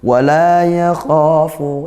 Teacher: kha mat tabi'i, panjang satu alif, kha-nya tebalkan